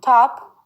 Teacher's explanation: produced by putting the front part of the tongue on the alveolar ridge that is the rough area behind and above the upper teeth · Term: alveolar sounds